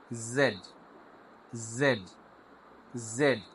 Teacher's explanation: মূলত জেড এর উচ্চারণ হবে সফট, জেড জেড। জিহ্বার মধ্যখান কোথাও লাগবে না, উপরে তালুর সাথে লাগবে না, জিহ্বাটা নিচু থাকবে, সামনের অংশটা সামনের দাঁতের দিকে যাবে।